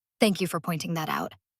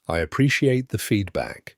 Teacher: Rising tone on thank you and appreciate.